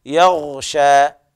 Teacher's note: والياء مرققة والغين حكمها التفخيم من الدرجة الثانية